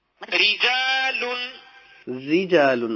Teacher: رجال را کے نیچے زیر ہے تو یہ پر والی صورتیں نہیں ہے، یہ بریک پڑا جائے گا، یہاں پہ را بریک ہے۔